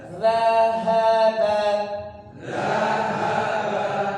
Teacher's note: dza itu lidahnya ujungnya dikeluarkan sedikit dza ya seperti digigit tapi enggak digigit jadi yang nempel itu ujung lidah dengan Gigi atasnya ditempelkan D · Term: huruf dza